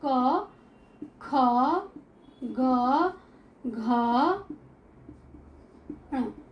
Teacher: कंठ से क वर्ग बोला जाता है